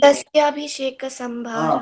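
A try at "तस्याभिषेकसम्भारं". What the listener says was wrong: You said bharyartha. It is bharya atha.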